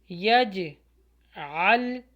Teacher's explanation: یہاں پر بھی قلقلہ ہو کیونکہ جیم کے اوپر سکون ہے, یج عل. اچھا, بیچ میں جو ہے لام ایک اسکپ ہو جائے گا لیکن جو تجدید والا لام ہے وہ عین کے ساتھ ملے گا.